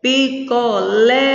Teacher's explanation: a sílaba tônica é a última essas palavras são oxítonas